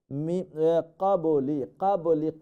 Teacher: যালিকা ফাউলাইকা হুমুল যালিমুন, কাফ ত বা এটা হচ্ছে কলকলা লেটার, আমরা খেয়াল রাখবো কাবলি, কাবলি কলকলা মানে একো সাউন্ড হবে